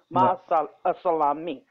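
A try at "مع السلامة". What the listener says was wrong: Masalama. Last vowel is silent. We ignore last vowel. So it is Masalama.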